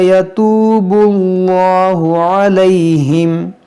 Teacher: اس میں جلالت کو ہم موٹا کریں گے کیونکہ یہاں پر پیش ہے، اگر اس سے پہلے پیش یا زبر ہو تو اس کو موٹا کیا جاتا ہے.